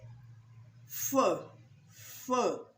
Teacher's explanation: there are voiceless consonant sounds like F. It is produced by our lips and teeth.